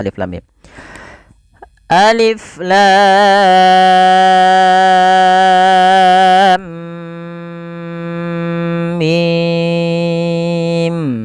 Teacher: Apabila ada mim mati bertemu mim dinamakan dengan idgam Mimi maka ditahan dulu suara mimnya sepanjang dua harakat